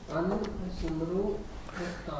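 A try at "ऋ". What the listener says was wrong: It is a mistake here. Nru is not correct. Ru dhatu is there. Rushi ru. An plus ru gati prapanayoho.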